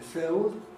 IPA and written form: fɪod (field)